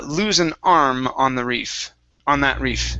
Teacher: Make sure to pronounce the M on arm instead of arn with an N.